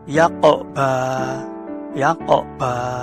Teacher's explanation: Nah, yaqnya itu harus jelas pantulan atau getaran hurufnya ini harus jelas. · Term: qalqalah sughra